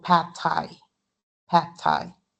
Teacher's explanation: Okay, so pad thai, it's unreleased